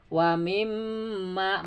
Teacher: ini mim bertasydid gunnah ya, 2 sampai 3 harakat ditahan